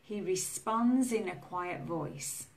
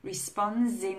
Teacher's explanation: We still have the ending sound z, but it's linked to the in.